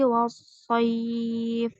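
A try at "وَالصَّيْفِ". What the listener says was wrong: Wassoif. Pelan ya, jangan wassoif. Nggak boleh gitu ya. Jadi jangan dibaca soif gitu.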